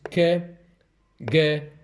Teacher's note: They are those consonants which are produced when the back of the tongue touches the soft palate or is in contact with the soft palate. They are called velars because the producer, the soft palate that is called velum.